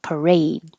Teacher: You don't have to say the last D, parade.